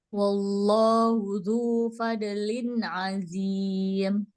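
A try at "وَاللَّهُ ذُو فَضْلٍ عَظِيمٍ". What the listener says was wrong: Botnya ditahan, jangan kol-kolah. Wallahu dzu fadlin azim. Fad ditahan, jangan dikol-kolahin.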